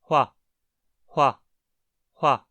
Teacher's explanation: Frequentemente, essa consoante é descrita como uma consoante velar labializada surda.